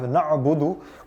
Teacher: We have na'budu, which has got an ayn in it, so remember a guttural sound.